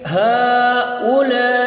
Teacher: حمزہ ہا جو چشمی ہا ہے وہ سینے سے نکل رہا ہے ، اور حمزہ جو ہے وہ حمزہ کی آواز نکلے گی،